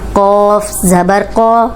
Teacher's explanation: अब ये मोटा कफ है तो ये जबर के साथ भी मोटा ही पढ़ेंगे लेकिन लंबा नहीं करेंगे